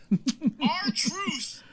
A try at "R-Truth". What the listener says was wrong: Truce? Did you just say our truce? You said like truce.